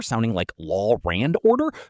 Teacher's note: intrusive sounds, adding a R or W between vowels, like law and order, sounding like law rand order